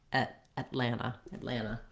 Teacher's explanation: the air and then releasing into the l at atlanta atlanta you'll hear that that second syllable of atlanta is stressed · i do move my tongue up to make the t but i don't release it so rather than act with the release of air i lift · far back in the throat but getting ready for that l marking the t by lifting the tongue and stopping the air and then releasing into the l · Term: stopped t